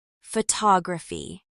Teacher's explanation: the word photography in American English is stressed on the second syllable, photography, not photography.